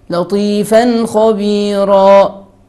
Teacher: So, here we make idhar halqi without ghunna, without complete ghunna.